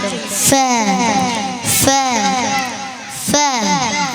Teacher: മേലെ മുൻപല്ലുകളുടെ തലയും താഴെ ചുണ്ടും